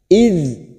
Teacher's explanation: idz hati-hati huruf Dal sukun jangan sampai memantul kita tahan ID posisi ujung lidah kita berada pada gigi seri bagian atas